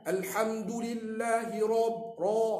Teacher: dia nak tebalkan huruf ra bila maftuhah dia kena mufakhamah tebal